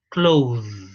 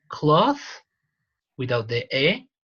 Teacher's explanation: When there is a noun, is with the voiceless, and when it is a verb, it is with the voiced, right? And additionally, this and this, the vowel changes.